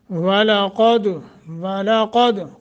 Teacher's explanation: قاف کو موٹا، دال پہ قلقلہ، واو کو بھی موٹا کرنا ہے،